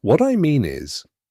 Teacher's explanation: What I mean is, has a rising intonation on mean, then a slight pause. That signals you're about to deliver clarity.